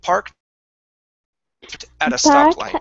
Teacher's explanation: we're going to go really quick and then up on stop down on light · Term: intonation